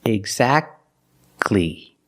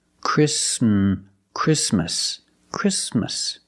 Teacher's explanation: Now, let's talk about situations when the T is silent. The T is silent when it's between consonants.